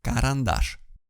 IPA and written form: karanˈdaʂ (карандаш)